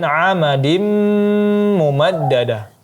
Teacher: tanwin bertemu dengan mim, maka hukumnya idgham bi gunnah, digunahkan lagi selama 3 sampai 4 harakat. Kemudian mumaddada dijelaskan tasydidnya mumaddada, ya begitu cara membacanya.